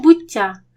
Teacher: дві букви Т але вони теж позначають один звук м'який подовжений ті